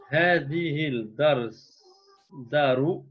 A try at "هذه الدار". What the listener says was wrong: Stop. Là, je te prends une petite légère erreur. Hein. C'est que c'est une lettre shamsia. Donc, tu ne prononceras pas le lam. Tu prononces une shadda avec le dal qu'on doit bien entendre, mais pas le lam. Donc ça donnera هذه الدار.